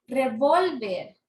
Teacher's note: Porque la tiene en la penúltima sílaba. La mayor fuerza de voz cae en la penúltima sílaba. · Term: Grave